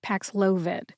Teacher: emphasize the second syllable which is low